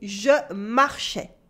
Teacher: you can notice here that the S at the end of marchais is silent